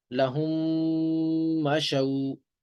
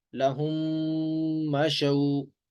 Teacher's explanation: میم ساکن کو میم متحرک میں داخل کر کے پڑھیں گے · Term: میم کا میم میں ادغام